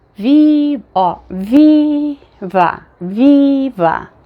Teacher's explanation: Ele é um i um pouquinho mais longo, mesmo em português, por causa da posição que ele fica na palavra.